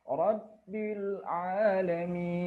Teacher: Nah, ini di akhir kalimat ada mim kasroh, kemudian diikuti oleh huruf ya yang berharokat dengan sukun, maka dibaca panjang. Panjangnya lebih dari 2 harokat.